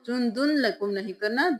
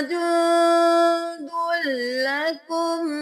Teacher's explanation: हुआ जुंदुल लकुम, जुंदुल लकुम नहीं करना, दाल को लाम के साथ मिलाएं